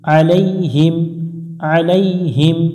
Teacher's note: আইন এটা গলার মধ্য থেকে একটু চেপে পড়ব